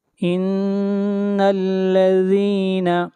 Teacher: آگے بڑھیے آیت نمبر 12۔ ان الذین، نون کے اوپر شد ہے، آواز ناک میں جائے گی